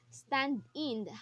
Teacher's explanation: The fit is stress followed by unstressed, which we can identify as a trochaic type of metrical fit instead of iambic.